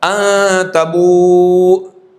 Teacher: تو الف وقف میں بھی نہیں پڑھا جائے گا، وصل میں بھی نہیں پڑھا جائے گا